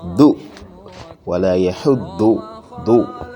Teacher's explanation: dot comes from the left, it is pronounced using the left part of the tongue.